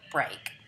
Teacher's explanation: the cluster br is the onset, the diphthong a is the nucleus, and the final k is the coda.